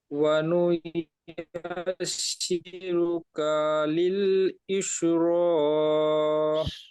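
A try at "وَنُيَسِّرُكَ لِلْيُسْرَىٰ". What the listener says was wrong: এখানে কা বলে টান হয়ে গিয়েছে, কাপে টান হবে না, জাবার, কাপ জাবার কা, খেয়াল করবেন।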